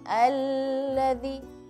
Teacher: perlu diperhatikan ketika membaca alladzi, nggak boleh lamnya lama. Alladzi, tapi beda dengan ketika membaca illa masya Allah ya.